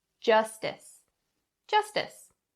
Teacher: are a few pronunciation points the first one being the sound make sure it is the voiced ch sound and not the voiceless ch sound